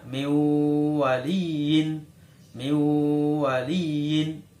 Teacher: Karena di situ ada nun sukun bertemu dengan wawu. Maka suara nun masuk ke huruf wawu. Jadi cara membacanya miwaliin. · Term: idgham bi gunnah